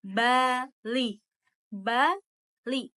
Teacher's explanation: udara keluar melalui rongga mulut dengan velum terangkat untuk jalan ke rongga hidung. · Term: bunyi oral